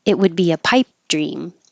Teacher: So you don't hear the T, the D, or the P.